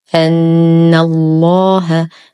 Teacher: نشد النون بغنة أكمل ما تكون، وننتقل من فتحتها إلى تشديد اللام المفخمة في اسم الجلالة جل في علاه.